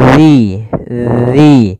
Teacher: Agar sempurna dari makhraj dan sifatnya adalah ujung lidah kita tempelkan dengan gigi seri atas, agak kita keluarkan sedikit sehingga berbunyi zi. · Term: huruf zal